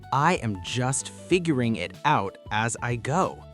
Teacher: Feel the stress on figuring and go.